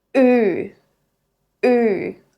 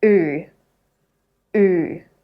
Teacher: the tip stays low, but the back of your tongue pushes forward.